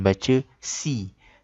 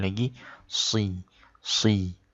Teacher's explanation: Satu lagi di kalimah ini, sirata ini, perhatikan yang pertama ini adalah huruf sad. Okey, huruf sad ini dia berbeza dengan sin. Dia tebal. Jadi kalau sin baris bawah kita akan baca si.